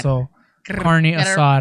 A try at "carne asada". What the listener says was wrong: Gotta roll the R, babe. Carne asada.